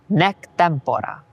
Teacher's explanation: Notice how the two consonants M and P make the first syllable of tempora long even though the vowel is short.